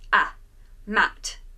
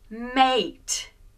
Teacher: consonant and then e the sound now becomes the long sound we don't pronounce the e we don't say Matty we just change the at sound to the long sound so ma te is not mat but mate the a sound